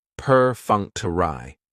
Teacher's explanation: Perfunctory has 4 syllables, and the stress is on that second syllable, that funk.